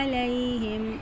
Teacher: ہے، علیہم، اب حرکات کو جلدی سے پڑھیں گے، یائلین ہے وہ یا ساکن جس سے پہلے زبر، اس کو یائلین کہتے ہیں، تو اس کو نرمی سے پڑھنا ہے